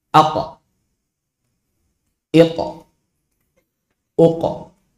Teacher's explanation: walaupun sebelumnya fathah, walaupun sebelumnya dhammah, walaupun sebelumnya kasrah, suara qalqalahnya sama.